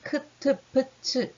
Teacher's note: 목청에서 강한 기류를 동반하는 그러니까 흐 같은 공기가 이렇게 팍 빠져나가는 그 소리가 동반된 소리를 거센 소리라고 이야기를 해요. 소위 좀 침이 많이 튀는 소리, 크, 트, 프, 츠 이런 소리라고 생각하면 됩니다.